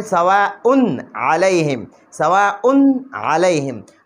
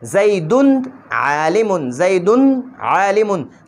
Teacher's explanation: نو اوس په دې زیدون کې مونږ غنه نه کوو، اخفاء به پکې نه کوو، بلکې دې کې به مونږ اظهار کوو. دا تنوین به مونږ ښکاره کوو، دلته کې دا ښکاره کول واجب دي.